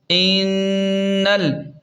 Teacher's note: حمزہ نون زیر ان، نون لام زبر نل، انل، یہاں پر نون مشدد ہے تو غنہ لازمی کریں